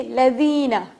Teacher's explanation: زال کے لیے ذرا زبان کو باہر نکال لیجئے تھوڑا سا تاکہ زال بہتر طور پہ آپ ادا کر سکیں